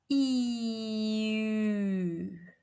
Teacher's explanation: The idea here is to blend the E position with the lip rounding of OO. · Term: the sound U